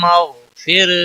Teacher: غین حروف مستعلیہ میں سے ہے، موٹا پڑھیں گے، غین کے اوپر کلکلا نہیں ہونا چاہیے